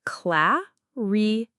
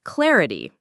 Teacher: For pronunciation, clarity is cla-ri-ti. The stress is on the first syllable, cla. Notice the A sound is like in cat, the I in re is a short I sound, and the T at the end is like T.